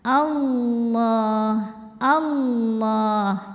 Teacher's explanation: kita bunyikan dengan tebal sebab huruf sebelumnya kan fathah ya jadi cara menebalkannya pangkal lidah kita naikkan bukan dengan memoncongkan bibir kita ya jadi bibir diam aja yang bergerak adalah ujung tepi lidah · a a-nya tipis lamnya tebal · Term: lam jalalah